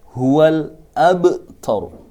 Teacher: Contoh ba di sini adalah huruf qalqalah. Maka karena di sini huruf qalqalah dan matinya asli dinamakan qalqalah sughra